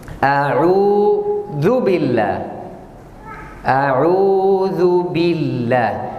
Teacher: Udah waw. Karena waw sukun sebelumnya dhammah jadi panjang, jadi mad.